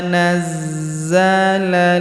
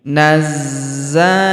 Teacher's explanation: Huruf za kita tahan dan kita tekan karena terdapat tanda tasdid di atasnya yang ini. Nazzalal huruf la langsung sambung ke huruf lam yang berharakat sukun.